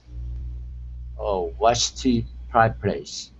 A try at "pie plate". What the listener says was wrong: Okay, instead of saying pie plate with the ch sound, it's t.